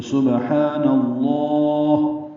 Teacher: سیٹی کی آواز سے، باریک آواز ہوگی، با سے ملائیں گے، با ساکن ہے، اس پہ قلقلہ ہوگا ، صبح ہا وسط حلق سے ہا ادا ہوگا، دو حرکات